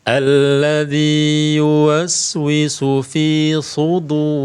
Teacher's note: huruf wau kasrah di sini tidak dipanjangkan ya huruf wau kasrah di sini tidak dipanjangkan karena bukan Madi